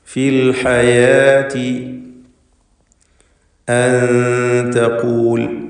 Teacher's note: സാക്കിനത്തായ നൂനിനെ ഇഖ്ഫ ഹഖീഖി നൽകി മറച്ചു മണിക്കുക, അവ്യക്തമാക്കി മണിച്ചുകൊണ്ട് ഉച്ചരിക്കുക.